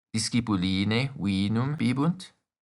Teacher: We also add a rising intonation at the end of the sentence, as well as ne.